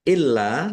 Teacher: lamnya dibaca double, ada tasdidnya, ditekan dan ditahan biar tampak doublenya.